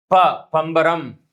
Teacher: இதழ்கள் ஒட்டுவதால் பிறக்கக்கூடிய எழுத்தாக இருக்கிறது